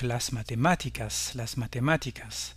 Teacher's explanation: Tous les mots espagnols qui se terminent par ico ou ica, la forme féminine, ont leur accent sur la syllabe antépénultième, à savoir l'avant-avant-dernière syllabe